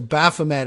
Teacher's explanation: putting the emphasis on the first syllable